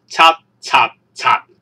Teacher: 由 N 嘅平上去聲變成 T 啦，就會變成 N 嘅入聲